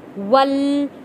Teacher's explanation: واؤ کو جوڑ کے پڑھیں گے تشدید والے لام کے ساتھ